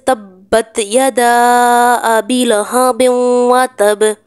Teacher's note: اگر قلقلہ کرنے والے حرف پر اگر وقف کرنا ہو اور ساتھ تشدید بھی ہو، یعنی کہ یہ شد بھی ہو، تو تھوڑا سا آواز کو زیادہ دبا کر قلقلہ کرتے ہیں ، تھوڑی زیادہ واضح آواز میں قلقلہ کریں گے۔ آپ نے